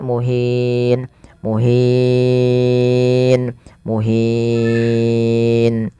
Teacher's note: Boleh memanjangkan dua harakat, boleh empat dan boleh pula enam harakat.